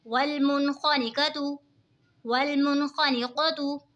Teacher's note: नून साकिन के बाद हुरूफ़े हल्की का ख़ आ रहा है तो इज़हार होगा यानी गुन्ना नहीं करेंगे। नून साकिन की आवाज़ को ज़ाहिर करके पढ़ेंगे हरकत।